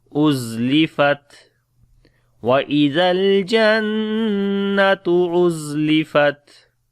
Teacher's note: The Ta has a Dhamma, so we say وَإِذَا الْجَنَّةُ أُزْلِفَتْ Za we read in bit hard sound, on the Ta again we make Shiddat and Hams quality.